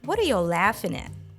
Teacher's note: make sure you put the main stress on the word laughing and make a broad s sound in at it is a